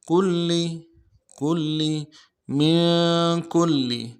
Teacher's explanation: لام کے اوپر تشدید زور دیں گے، اگلے لام کو نرم سے ادا کریں گے